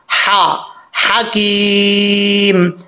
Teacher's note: हकीम में हा जो है वो बरीक है, इसका ताल्लुक हल्क से है, सीने की तरफ नहीं है, तो इसको बरीक पढ़ा जाएगा। हा हकीम, या मद्दा है, इसको एक अलिफ की मिकदार खींच सकते हैं, इससे ज्यादा भी खींच सकते हैं।